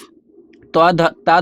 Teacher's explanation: त ध्वनि का उच्चारण स्थान दांत है